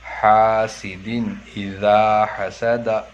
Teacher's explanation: حاسد اذا حسد، 2 زیر کے تنوین کے بعد حمزہ آ کر، حرف حلقی کے 6 حروف میں سے حمزہ آ کر ہے، اس لیے 2 زیر کی تنوین کو ظاہر کر کے بلا غنہ کے جلد پڑھیں گے، اس کو اظہار کہتے ہیں۔